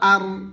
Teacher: রা সাকিনের আগে জবর থাকিলে রাকে পুর করে পড়তে হবে। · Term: রা পুর